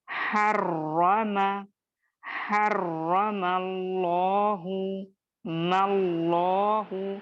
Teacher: हा बारीक लेटर है, दरमियानी हलक से या वसत हलक से अदा होने वाला लेटर है। रॉ को आप और मैं मुखफ्फम या मोटा पढ़ेंगे, और चूंकि तजदीद है यहाँ पे रॉ पर, तो इसको दो हुरूफ के जैसा अदा करेंगे।